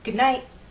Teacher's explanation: when T is at the end of a word, as in night, good night, Americans often change that T to a glottal stop. · We're going to talk about a stop of air here in your throat. Instead of good night, you will hear good night. The T is cut off. The sound is cut off here.